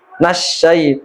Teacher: maka nanya tidak panjang langsung bergandingan dengan huruf syin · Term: alif lam syamsiyah